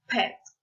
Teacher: The first sound is P. It's bilabial. The two lips usually close together and block the air that leaves the mouth. For example, pet.